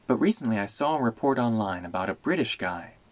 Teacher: the T in but turns into a glottal stop